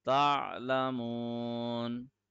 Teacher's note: End of the ayah, the fatha of noon is turning into sukoon.